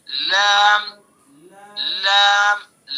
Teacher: لام کا مخرج زبان کا کنارہ ایک زاحک سے لے کر دوسرے زاحک تک اور اوپر کے دانتوں کے مسوڑے